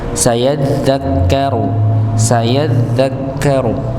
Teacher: ada tasydid pada huruf dzal dan kaf, maka dihentakkan nggih, agar nampak nggih bahwa ada huruf tasydid di situ, ada tanda tasydid di situ.